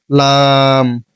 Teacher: জিহ্বার আগার কিনারা সামনের উপরের দাঁতের মাড়ির সঙ্গে লাগাইয়া